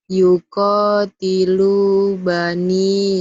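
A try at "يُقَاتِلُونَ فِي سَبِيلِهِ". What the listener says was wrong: Yuqatilu bani dari mana baninya? Yuk, lihat, lihat, lihat, lihat. Lihat lagi.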